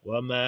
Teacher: Wa ma, qui doit être bien tiré de 5 temps.